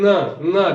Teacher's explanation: जब भी आप कहिए न, देखिए नाक में झंझनाहट होती है, कंपन महसूस होता है, हवा जो होता है काकल और तालु के बीच में जो नासिका छिद्र है वहां से बाहर निकलती है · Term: नासिक्य